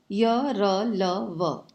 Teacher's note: इनके उच्चारण में जीभ मुख के किसी भाग को नहीं छूती है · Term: अंतःस्थ व्यंजन